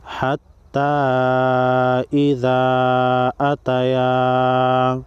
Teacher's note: چھوٹی مد کو تین الف کے مقدار کھینچ کر پڑھیں گے